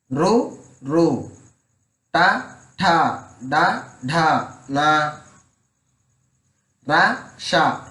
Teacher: నాలుకతో గట్టిగా అంగిలిని తాగుతూ పలికే అక్షరాలు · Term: మూర్ధన్యాలు